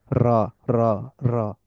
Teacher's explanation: Tip of the tongue taps the upper gums just behind the upper front টিস যে উপরের সামনের উপরের দাঁতের পেছনের যেই মাড়ির অংশটা ওইখানে জিহ্বার · টাচটা কিরকম হবে, ট্যাপ আকারে হবে, taps the upper gums. It produces a slight trill or vibration when pronounced correctly. র, র, র। একটু ভাইব্রেশন আমি একটু এক্সাজারেট করে করতেছি বোঝানোর জন্য, বাট স্বাভাবিকভাবে জিনিসটা আর একটু কম হবে।